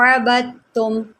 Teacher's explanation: دال ہم نے یہاں پر چھوڑ دینی ہے۔ آپ غور کریں کہ میں اس کو کس طرح پڑھ رہی ہوں، عَبَدتُّم، با کو میں نے تا کے ساتھ ملایا ہے، عَبَدتُّم۔